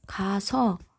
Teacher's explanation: 똑같은 모음이 붙는 경우에는 우리가 발음할 때 동음을 탈락시킨다는 거예요. 이런 식으로 똑같은 거를 지워주고 발음하죠.